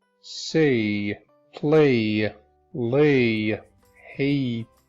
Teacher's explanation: Next up is the A sound. This actually sounds exactly like the letter A. You feel that it has a small little Y attached to it.